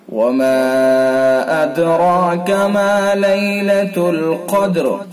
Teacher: دال کے اندر قلقلہ ہوگا، را پر ہوگا، الف بھی پر ہوگا۔